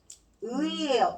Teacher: 의를 빠르게 발음하면 으로 시작해서 이로 끝나는 거죠